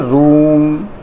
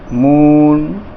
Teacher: तो रूम जब बोलते हैं तो ऊ की आवाज़ को दीर्घ बोल रहे हैं, यानी कि थोड़ा लंबा खींच रहे हैं इसको